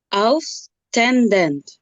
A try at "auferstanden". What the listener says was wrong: Se está saltando una sílaba. Tiene que decir auf er, esa sílaba. Auf er stenden. Son cuatro sílabas las que tiene que sacarme.